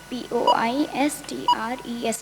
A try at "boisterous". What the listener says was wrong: You have to be clear and slow and loud. You missed the E.